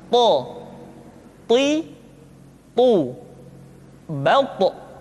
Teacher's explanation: ketika to diucapkan, suara kita terdengar menebal. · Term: huruf to